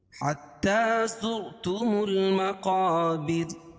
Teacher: بر، را ساکن، وقفہ کی حالت میں اس کو را کو جزم سے بدل دیں گے تو یہ را ساکن ما قبل زیر ہو تو را باریک ہوتی ہے وقفہ کی صورت میں۔ حتی زرتم المقابر، جب یہاں رکیں گے تو را کو باریک پڑھیں گے۔